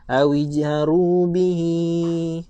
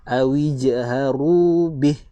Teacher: Kita akan berhentikan dia dengan matikan huruf ha tanpa panjang.